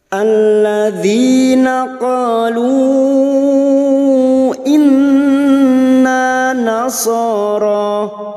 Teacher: Pada saat dibaca wasol atau terus maka lu kita panjangkan 4 atau 5 harokat. Mad jaiz munfasil jika kita membaca terus atau wasol.